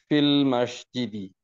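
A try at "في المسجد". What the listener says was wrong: Very good.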